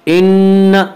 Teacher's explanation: نون مشدد غنہ ہوگا